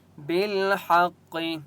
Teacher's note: قاف مستعلیہ میں سے اس لیے قاف کو موٹا پڑھیں گے